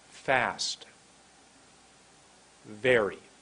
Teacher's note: you put your top teeth on your bottom lip it says top teeth on bottom lip find the exact comfortable